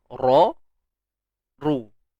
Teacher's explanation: Kita tahu ra yang berbaris depan ataupun baris atas dia memang tebal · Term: huruf ra yang tebal